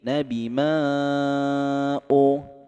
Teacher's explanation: di sini ada mad bertemu dengan hamzah. Tapi ini beda kata, disebut dengan mad jaiz munfasil. Kita pakainya 4 harokat ya, atau 2 ayunan saja.